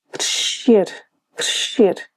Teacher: The sh sound takes over and drags on, and the s sound of the C is completely ignored.